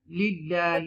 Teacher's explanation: this is tarqiq you will read with the tarqiq because this is the isme jalalat here lillah you will read it softly